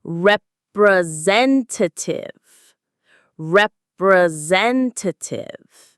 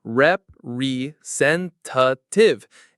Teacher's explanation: There are 3 schwa sounds in that one word.